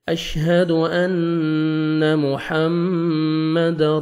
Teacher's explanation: میم شد ہے، غنہ کریں گے، نوز میں ساؤنڈ لے کے جائیں گے